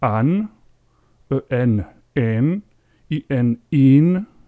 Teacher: Donc finalement, ce qu'il faut retenir de tout ça, c'est que en espagnol, dès que vous avez un groupe qui contient AN, la voyelle est toujours ouverte. Il ne faut pas la nasaliser